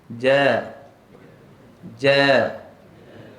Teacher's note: huruf Jim ni bila berbaris fathah kita akan baca nipis istifal infitah